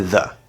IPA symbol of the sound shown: ə